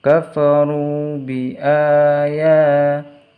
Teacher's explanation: a dan ya ada harokat fathah berdiri, maka harus dibaca panjang 2 harokat